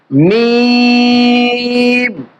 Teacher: এই হরফের মাখরাজ হচ্ছে ২ ঠোঁটের শুকনা অংশ থেকে, ২ ঠোঁটের শুকনা অংশ থেকে মিম।